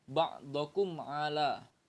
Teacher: maka mim sukun harus dibaca dengan jelas tanpa disertai dengan dengung. Jadi bacanya itu jelas ya. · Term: idhar syafawi